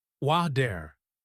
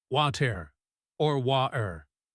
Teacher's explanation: In American English, the T is a flap D, wa-der. In British English, it is a sharp T or a glottal stop, wa-ter, or wa-er. Depending on who you are listening to, that word changes shape.